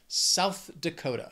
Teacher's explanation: then we have South Dakota this state has four syllables but the stress is going to be on that second word Dakota that second syllable